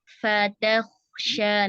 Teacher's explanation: Kho-nya juga punya sifat rikhwah, maka dialirkan dulu, jangan terburu-buru.